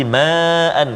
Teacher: kalimah ma'an, mad wajib 4 atau 5 harakat kena jaga